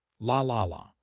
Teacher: The light L uses the tip of your tongue touching the roof of your mouth behind the teeth.